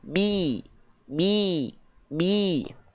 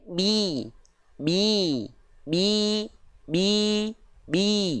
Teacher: vokal I Tengah lidahnya diangkat